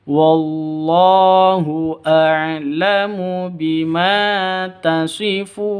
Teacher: Jadi pendek semuanya. Bima, ma panjang 2 ketukan karena ada alif diawali dengan fathah